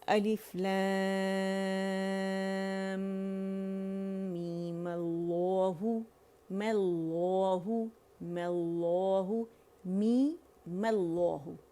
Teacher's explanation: مد اصلی بنایا اور پھر میم پہ فتح ڈال کے لفظ الجلالہ سے میں نے اسے جوڑ دیا، اور میم باریک ہی رہے گا، ٹھیک ہے؟ باریک لیٹر ہے، لفظ الجلالہ موٹا ہے، اور حمزۃ الوصل کو پھر نہیں پڑھا جائے گا۔